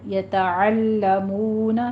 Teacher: یتعلمون لام کے پر تشدید ادا کیجیے، سختی کر کے پڑھنا ہے اور مون میں دونوں ہونٹوں کو گول کرتے ہوئے واو مدہ